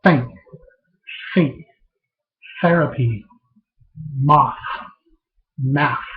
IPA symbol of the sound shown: θ